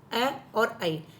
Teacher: ये कंठ और तालु दोनों से मिलकर बने हुए हैं, इसलिए इनको कंठ तालव्य कहते हैं।